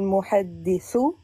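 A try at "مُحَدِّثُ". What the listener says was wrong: Ah, bah là, tu as bien dit.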